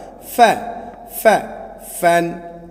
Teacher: সদ স স, ফা ফা, হ্যাঁ, উপরে দুই দাঁতের আগার সঙ্গে লাগায়, নিচের ঠোঁট উপরে দুই দাঁতের আগার সঙ্গে লাগায়